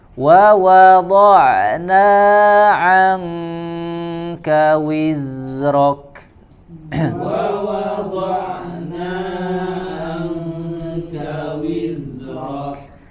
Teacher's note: Wiz, nah di huruf zai dia ini, ya, apa, mengalir suaranya jelas, ya, dan juga nanti di sini ada huruf kaf, wizrok, ya, huruf kafnya dia mengalir anginnya ditunaikan.